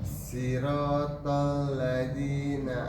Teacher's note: Siratal, keluarkan dulu desisnya. Dia bersifat hamas, ada desisnya.